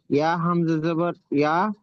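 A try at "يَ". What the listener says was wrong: ইয়া, টান হবে না, ইয়া হামজা জবর ইয়া।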